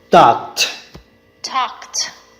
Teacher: the ed ending to be pronounced as the voiceless t with no vocal cord vibration